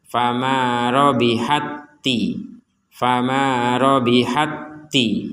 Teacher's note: yang kedua kemudian di TA yang kedua ada tanda tasdid artinya ta Yang pertama dimasukkan kepada ta Yang kedua